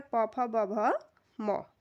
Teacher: होठों से हमारे दोनों जो हमारे होठ होते हैं, वह इनको उच्चारित करते समय आपस में मिलते हैं। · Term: ओष्ठ